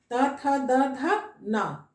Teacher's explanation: इसका उच्चारण स्थान दांत से होता है। देखोगे जीभ जो है वो आगे आकर दांत को छूता है।